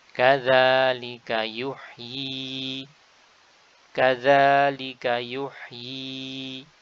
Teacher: Meskipun di sini tidak ada huruf ya. Jadi kita baca dengan ya kasrah yang dimatkan 2 harakat. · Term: ya mat